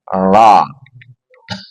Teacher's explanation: ro ujung lidah bertemu dengan gusi dua gigi atas